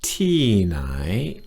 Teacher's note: the tones, T is falling and nai is rising.